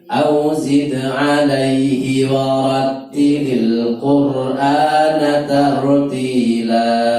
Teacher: ti dan la panjangnya sama, tidak boleh la lebih panjang dari ti.